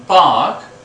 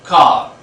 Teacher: While pronouncing this, the back part of the tongue is raised, and that's why this is called long back vowel. · This A is a long back vowel. You can see the back part of the tongue is raised.